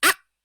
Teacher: হ্যাঁ, নুক্তাওয়ালা কফ হলে কলকলা হইবে, এটা মধ্যখান পেঁচানো কাফ, কলকলা হবে না, একবারে আটকে রাখতে হবে আওয়াজটাকে